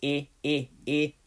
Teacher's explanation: that first e has a little bit of a closed sound